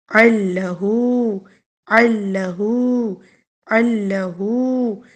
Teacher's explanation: عین کی آواز نکلے گی حلق سے، حلق کے درمیانی حصے سے